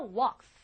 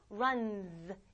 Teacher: 그래서 walk, 안 울리니까 walks 이렇게 가요. 그러나 run 울리니까 runs 이렇게 됐었던 거죠.